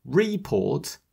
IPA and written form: 'rɪpɔːt (report)